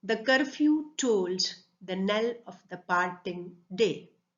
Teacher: every second syllable in this line is stressed. Every second syllable in the third pair, then in the fourth foot, and then in the fifth foot.